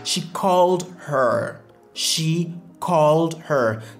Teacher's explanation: Dans cette phrase, on voit que c'est called qui est le mot qui sera vraiment accentué.